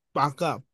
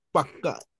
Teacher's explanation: এখানে তো স্যার একটা অতিরিক্ত উচ্চারণ হচ্ছে। হ্যাঁ, অতিরিক্ত উচ্চারিত হচ্ছে, তার মানে ডাবল হচ্ছে ব্যঞ্জন আসলে। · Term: ব্যঞ্জন দ্বিত্ব